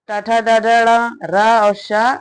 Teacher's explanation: मूर्धा और जीभ के स्पर्श वाले वर्ण मूर्धन्य कहलाते हैं।